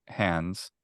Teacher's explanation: it's pretty common in most uh American accents to have some kind of diphthong before a nasal